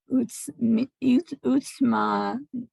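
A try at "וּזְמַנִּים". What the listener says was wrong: not sa. It's a Zion now, so it's z. Ooze.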